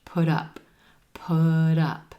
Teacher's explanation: That T at the end of put becomes a flap T because it's in between two vowel sounds. It sounds like a soft D and it links over in front of the word up.